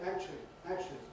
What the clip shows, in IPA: ˈækʧli